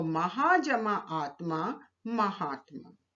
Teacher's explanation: पहला शब्द महा, इसका अंतिम वर्ण है आ, और आत्मा, आत्मा का प्रथम वर्ण है आ। तो आ जमा आ मिलकर दीर्घ आ हो गया।